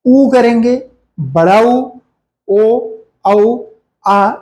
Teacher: पश्च स्वर की बात करेंगे तो अब जिह्वा जब पीछे के भाग को छूती है, जैसे आ करेंगे तो ये पीछे की ओर जाता है। ऊ करेंगे, बड़ा ऊ, ओ, औ, आ, ये अंग्रेजी का आ है।